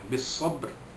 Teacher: ba itu dilantunkan bunyinya, lemah saja, itu qalqalah